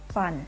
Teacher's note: The F sound is called voiceless labiodental fricative